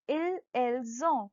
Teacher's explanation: We are saying it as ill or l. Also, ont is not pronounced as on. It is pronounced as zon. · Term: liaison